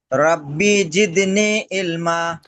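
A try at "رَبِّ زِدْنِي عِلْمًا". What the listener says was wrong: রব্বি টান নেই, রব্বি জিদনি ইলমা।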